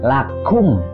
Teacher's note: Kaf, cara mengeluarkannya itu harus disertai dengan udara